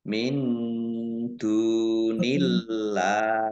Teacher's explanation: dibaca samar-samar Dal domah wau sukun Mad Thobi'i panjang dua harakat Allahnya dibaca tipis karena harakat di depannya kasrh